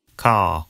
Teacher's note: Father ends in a simple schwa vowel, like father. And in car, the vowel sound is lengthened in place of the R sound. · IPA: / kɑː /